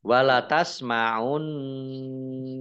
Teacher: Nun tasdid dibaca gunah atau mendengung, ditahan 2 harokat